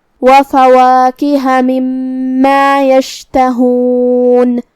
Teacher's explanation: شین کو ہم زبان اور اوپر کے تالوں کے درمیان سے ادا کریں گے